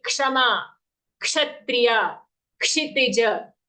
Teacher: So the Ksha sound is actually made up of 2 sounds, half ka, full sh.